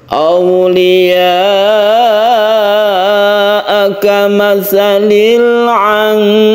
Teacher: Awliya'a ini kita panjangkan karena dia itu mad wajib mutasil. Mad wajib mutasil itu panjangnya bisa 2,5 alif atau 5 harokat.